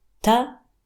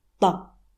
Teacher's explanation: When it comes to the position of the tip of the tongue, both when you say ta and ta are the same, but when you pronounce ta, your tongue stays flat, but with ta, the center of your tongue sinks down, and you press harder at the tip of your tongue.